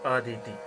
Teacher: अ में स्वर नहीं है, उदात्त है। दी में स्वर है, स्वरित है। ती में स्वर है, वह अनुदात्त स्वर है। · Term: उदात्त, अनुदात्त, स्वरित